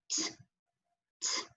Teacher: our tongue is touching the top of our mouth right behind our teeth. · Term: T sound